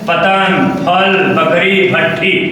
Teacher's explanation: आपका एक ओठ दूसरे ओठ पर चिपक रहा है। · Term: प वर्ग